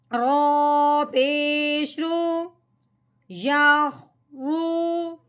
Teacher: رو کے اوپر کیا لگی ہوئی ہے؟ پیش لگی ہوئی ہے، تب ہم نے کیا کرنا ہے؟ رو کو موٹا کر کے پڑھنا ہے